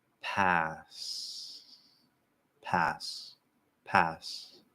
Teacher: if you listen really carefully, you'll probably notice that the breath continues to get less and less. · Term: end of word devoicing